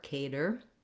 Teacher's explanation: Then when we get to the letter T in cater, instead of having the T sound with a release of air like it would be at the start of a word like talk or take, here it sounds more like a D